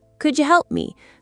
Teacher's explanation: The D + Y combination across a word boundary becomes a J sound. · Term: assimilation